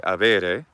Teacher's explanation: avere without the H sound, with some kind of bilabial fricative for the letter B